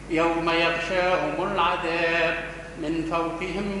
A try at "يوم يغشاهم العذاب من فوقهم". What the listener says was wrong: ما تفصلهاش كله مع بعض. يوم يغشاهم العذاب من فوقهم.